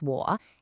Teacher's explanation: It's got that dipping third tone.